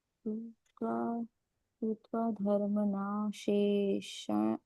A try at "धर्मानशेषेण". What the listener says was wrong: धर्मना नहीं, धर्मान।